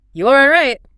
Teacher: Did you hear it go up high at the end? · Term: high, rising tone